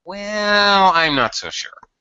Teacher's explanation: when we want to reject an idea, it's very common to have that weird, long, stretched vowel sound at the beginning